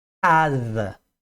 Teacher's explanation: a palavra casa em português repare quando você fala casa que é lá no final da garganta que você produz o som do C